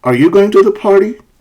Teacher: so the pitch is rising and that makes it a question it's a yes no question